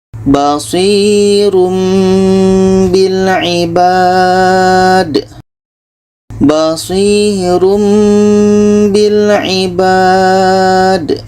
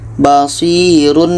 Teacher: Tanwin bertemu ba itu iklab. Bermakna di sini kita dengungkan, dan bunyi tanwin ini kita tukar ke mim. Kita tukar kepada bunyi mim.